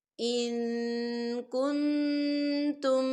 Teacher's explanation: دیکھیں ان، یہاں پہ نون ساکن ہے اور نون ساکن کے بعد کاف آ رہا ہے، اور کاف جو ہے اکفا کا ورڈ ہے، تو ہم یہاں اکفا کریں گے، ہم نون ساکن کی آواز کو ناک میں چھپائیں گے